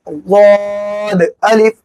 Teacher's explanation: اس کے آگے غاد الف، غاد زبان کا کنارہ داڑھ کی جڑ میں لگائیں گے، غاد الف، نوک کہیں پہ بھی نہ لگنے پائے، غاد میں نوک کہیں پہ بھی نہیں لگے گی ورنہ غا بن جائے گا